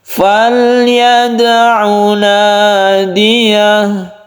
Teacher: Untuk sukun lam ini tawassut atau tengah-tengah saja, tidak terlalu ditekan ya.